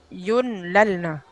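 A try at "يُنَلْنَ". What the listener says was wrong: Yunnal. Nunnya 3 kali. Yunnalna. Bukan yunlalna, tapi yunnalna. Nunnya kan 2. Yang jelas hurufnya jangan tertukar itu saja.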